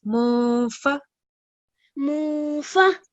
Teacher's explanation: So over here, the ikhfa and izhar rule comes in. So there is letter fa after noon sakin. So we follow the ikhfa rule and we produce the gunna sound for 2 seconds.